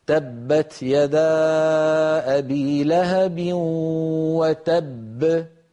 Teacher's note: بينما الحرف المدغم مثلا الاولى المدغمه تخرج بالتصادم كعيدها من الحروف الباء الاولى مدغمه والباء الثانيه مقلقله